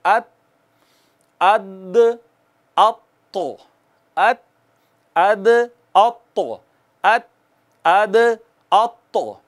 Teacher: नोके ज़बां ऊपर वाले 2 दांत जिन्हें सनाया उलिया कहते हैं उनकी जड़ों को लगी है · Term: हरूफ़े नितइया